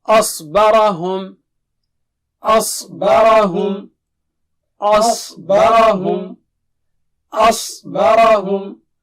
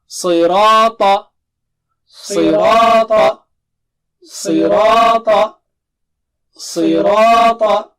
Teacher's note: تو سا نہیں پڑھنا اس کو، صاد کو سا نہیں پڑھنا ہے اور سوا نہیں بولنا ہے اور ہونٹوں کو گول نہیں کرنا ہے